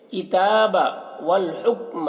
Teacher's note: ہا کو حلق سے ادا کریں گے، اور اس کاف میں قلقلہ نہ ہونے پائے اس کا خیال رکھنا ہے۔